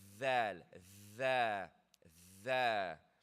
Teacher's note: Make sure your tongue, the tip of your tongue touches the bottom edge of your teeth. Right? And you have to blow.